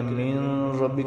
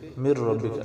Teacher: وہاں پر نون کو ہم اگلے حرف کے ساتھ ملائیں گے تو وہاں پر غنہ نہیں ہوگا